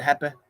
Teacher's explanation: Brazilians, final Y, like happy, the E is too short, happy.